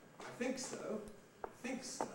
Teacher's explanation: There we've got a nucleus, think, followed by a tail, preceded by a prehead. And this illustrates the general point that you can have a prehead without a head.